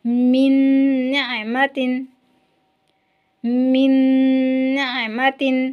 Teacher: تیسرا قاعدہ ہے ملانا، یعنی نون ساکنہ اور تنوین کے بعد جو یہ 4 حرف ہیں آئیں گے تو غنہ ہوگا اور ان حروف کو ملائیں گے، یعنی کہ ان حروف کو ملائیں گے بھی اور غنہ بھی کریں گے 2 حرکت تک ناک سے آواز نکالتے ہوئے